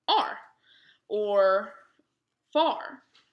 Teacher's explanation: The sound for this A it's not short or long. Almost non-existent because it's overshadowed by this R.